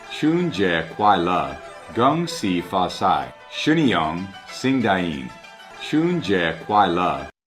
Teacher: I can definitely hear subtle falling tones for 快乐. And his deep sounds sound better too, as there's more mouth movement like 节 and 快, but it would sound a lot better if the N in 春 is pronounced.